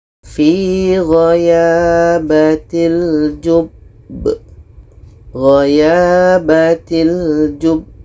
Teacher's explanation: ada ba mati diiringi dengan tasydid pada akhir bacaan. Ini qalqalah akbar. Cara bacanya kita berhenti 2 detik baru matikan huruf yang terakhir.